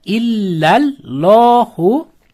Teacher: Endi Alloh lafzi so'z o'rtasida kelsa ikki harakat cho'zib o'qiladi.